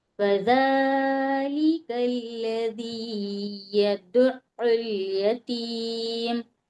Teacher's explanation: فا کے اوپر زبر کی حرکت ہے، اس کو بالکل نہیں کھینچیں گے، جلدی پڑھیں گے